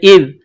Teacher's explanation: ذال زبان کا سرہ تھوڑا سا باہر نکالیں گے، ذال کو پڑھتے وقت ذال کو نرم پڑھیں گے